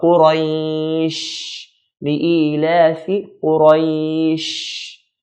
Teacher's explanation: The sheen here, sheen is a letter that has the characteristic of something called tafashi. Tafashi just means spreading of the sound. So when we say the sheen, the sound spreads.